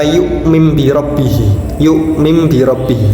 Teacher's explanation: huruf ba menjadi bunyi huruf mim dan disertai dengan dengung sehingga tidak diperbolehkan membacanya tanpa adanya dengung. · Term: iqlab